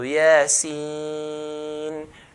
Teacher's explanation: These letters we stretch to 6 counts. So yasin, the ya part 2 count, yeah, but the sin part 6 count.